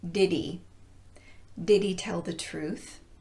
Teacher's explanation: when he is being linked to did the initial H is often omitted